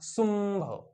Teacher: अनुनासिकासारखे म्हणजे नाकातून उच्चार. बघा सुंभ मचा उच्चार नाकातून होतो, अनुनासिकासारखा उच्चार होतो.